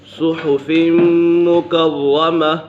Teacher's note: میم مشدد ہے، میم مشدد میں ہمیشہ غنہ ہوتا ہے، اور را مشدد ہے، اسے جماع کے ساتھ پڑھیں گے۔